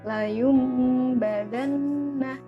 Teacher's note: jangan lupa untuk berdengung 2 harokat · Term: iklab